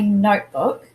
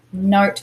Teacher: when we say notebook, we emphasize the part note.